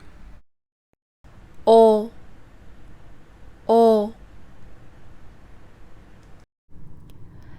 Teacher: this sound is a back vowel, so when making this sound, your tongue has to pull back a little bit